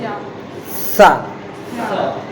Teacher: दंती सा जो रहेगा तो जीभ किसको टच करेगी? दांतों को।